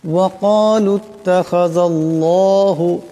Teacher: ওয়াকালুত তাখাযাল্লাহ, এই জাল এই আল্লাহ লামকে ধরবে। জালের উপর জবর আছে, গতিকে আল্লাহ লামকে মোটা করিয়া পড়তে হবে